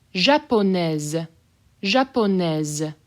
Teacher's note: I'll say the S as a Z.